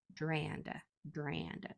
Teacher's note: So if it was pure, it would say Dranda, but that's hard for us to say quickly. That A turns into kind of a nasal sound naturally when there's an N after it. So you might just find yourself saying Dranda, Dranda. · That A just kind of gets elongated and kind of nasalized. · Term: whiny A